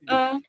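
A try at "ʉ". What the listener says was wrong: Non, le U barré, ce n'est pas E. C'est U comme le U normal en français, le U barré.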